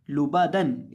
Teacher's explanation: लाम को होंठों को गोल करके पढ़ेंगे और बा और दाल को हम होंठों को गोल किए बगैर पढ़ेंगे क्योंकि यहाँ पेश नहीं है